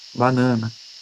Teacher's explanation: Esse A final, ele tem uma força menor, ele é uma pronúncia diferente de um atônico, a, né, muito mais fraco.